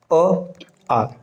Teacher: इसका जो उच्चारण स्थान है ये कंठ है